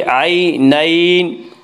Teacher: یا لین وہ یا جو ساکن ہو اور اس سے پہلے زبر ہو، یا لین کو نرم آواز کے ساتھ جلدی پڑھیں گے